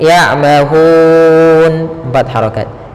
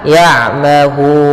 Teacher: Cara membacanya yaitu kita panjangkan hu-nya, boleh 2 harokat, boleh 4 harokat, dan boleh pula 6 harokat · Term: mad arid disukun